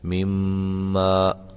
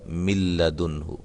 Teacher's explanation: اس میں غنہ کیا گیا ہے مما، اور اس میں غنہ نہیں کیا گیا من لدنہ